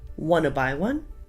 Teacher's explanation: the words want and to flow into each other. So the T sound at the end of want and at the beginning of to are silent. So all we hear is wanna. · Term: connected speech